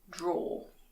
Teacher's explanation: in British English we don't pronounce the ER at the end. We just say draw.